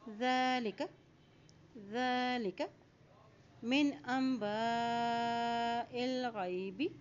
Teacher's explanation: حمزہ کے اوپر مد ہے، اس کو لمبا ادا کرتے ہوئے پڑھیں گے۔ یہاں حمزہ کی زیر کو لام کے ساتھ ملائیں گے، حمزہ زیر لام ال، کیونکہ لام کے اوپر جزم ہے۔